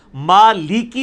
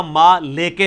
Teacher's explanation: جب لام زیر لی آئے گا نا تو لام زیر لی پڑھنا ہوگا، لام زیر لے نہیں پڑھنا ہوگا، ما لی کی پڑھنا ہوگا، ما لے کے نہیں پڑھنا ہوگا۔